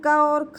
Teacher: कंठ ध्वनियाँ कौन सी हैं, का और खा जो है वो कंठ ध्वनियाँ हैं